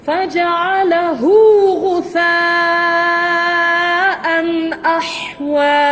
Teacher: Hu tu silah saghira, tidak panjang.